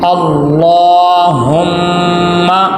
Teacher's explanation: آگے میم مشدد ہے، میم مشدد پہ غنہ ہوگا